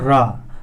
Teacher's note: लुंठित का अर्थ होता है जीभ का आगे से मुड़ना, जैसे ही हम बोलते रा, तो जीभ जो होती प्रकंपित हो जाती है, उसमें थोड़ा सा ट्विस्ट आ जाता है जीभ बोलने में। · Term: लुंठित ध्वनि